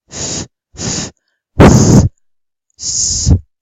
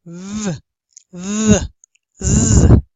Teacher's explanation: If we say f, f, s, s, there is no voice, but if we say v, v, z, there is voice, and we activate the vocal folds.